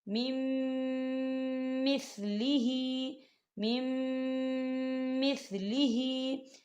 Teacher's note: نون ساکن کو جو ہے اگلے میم کے اندر مدغم کریں گے